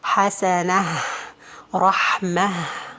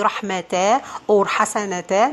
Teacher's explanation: If you have the tanween coming on the circled or the closed ta, like rahmatan or hasanatan, in this case, you are not going to change it to be alif, but this tanween or this ta is going to be pronounced as ha